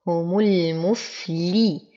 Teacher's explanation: هم وتم ضمة الميم، أصبر على الفاء وأعطيها الهمس والرخاوة